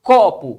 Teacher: Se eu falo copo, você percebe que esse CO é mais forte do que o PO. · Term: sílaba tônica